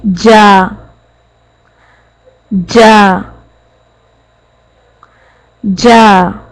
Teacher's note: Middle part of the tongue touches the hard palate, opposite side of the mouth. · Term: jeem